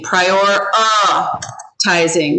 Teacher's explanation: this is called a schwa and it makes an uh sound